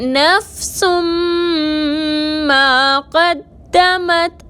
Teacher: نفسن میں سین کے اوپر 2 پیش کی تنوین ہے اور اس کے بعد حروف یومن میں سے میم آ رہا ہے، مشدد کر کے غنہ کے ساتھ ادا کریں گے، میم کے ساتھ الف مدہ ہے، 2 حرکت کے برابر کھینچ کر پڑھیں گے۔